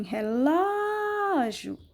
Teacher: o acento fica na sílaba tônica que é o ló